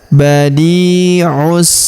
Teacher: huruf di kita panjangkan dua harakat karena ya sukun di depannya